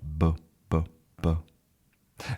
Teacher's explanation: So we have our voice activated. Our voice is activated, and we have our lips together. B. And then we kind of explode with this sound. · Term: B sound